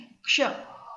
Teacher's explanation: तो ये जो क्ष है, तो जब मैं उच्चारण कर रही हूँ तो आप ध्यान से सुनिए। क्ष, तो क और श की ध्वनि एक साथ आ रही है, तो ये क और श को मिलने से बनता है। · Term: संयुक्त व्यंजन